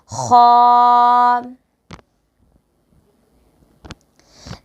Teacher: خا کو ادا کرنے کا طریقہ یہ ہے کہ حلق کا وہ حصہ جو منہ کی جانب والا ہو وہاں سے خا ادا کیا جائے گا